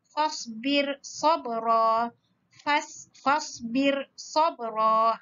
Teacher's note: Jadi ra yang bertanda mati ini kita baca nipis.